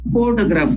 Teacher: We stress there the first syllable, we say photograph